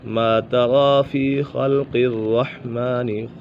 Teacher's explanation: خا بھی پر ہے، قاف بھی پر ہے، را بھی پر ہے، را مشددہ اپنی حرکت کے مطابق پور یا باریک پڑھی جائے گی، یعنی زبر یا پیش ہو تو پور پڑھی جائے گی، اگر زیر ہو تو را مشدد باریک پڑھی جائے گی۔